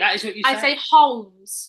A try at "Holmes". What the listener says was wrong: No, you say Holmes. Sherlock Holmes. Sherlock Holmes. Yeah, it's a silent L.